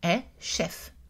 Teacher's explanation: chef est prononcé avec un F, donc on a une voyelle mi-ouverte